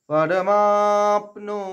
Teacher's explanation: পরমা মাকে দীর্ঘ করার পরে পয়ের আঘাত নেব